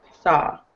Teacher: you pretty much ignore the W